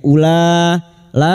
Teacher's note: huruf wau di sini dianggap tidak ada ya u-nya kita baca pendek